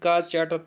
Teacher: इसके अतिरिक्त आप देखेंगे घोषत्व के आधार पर घोष में, तो घोष और अघोष या सघोष की जो परिकल्पना बताई गई है वो ये है कि स्वर तंत्रिका जो होती है उसमें अगर कंपन होता है तो उसको सघोष बोलते हैं या घोष बोल देते हैं, और कंपन नहीं होता उसको अघोष बोल देते हैं